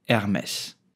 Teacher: the H in French is totally silent so do not pronounce it do not say Hermes but just Hermes did you know that